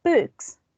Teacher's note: the k here is voiceless so in this case of this plural the s this sound it's going to be voiceless as well